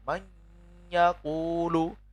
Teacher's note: nun sukun bertemu ya itu kan mendengung. Jadi ada dengungnya. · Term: bi gunnah